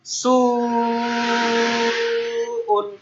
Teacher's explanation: এখন সুটাকে আমরা 4 থেকে 5 আলিফ টানবো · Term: মুত্তাসিল